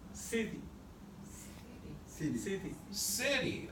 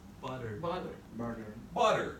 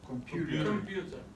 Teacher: it's not quite a T sound, and it's not quite a D sound either. It's in between. It's that soft D.